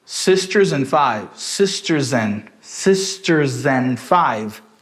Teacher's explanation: O N neutraliza o D também. Então a gente não vai falar and. A gente fala N.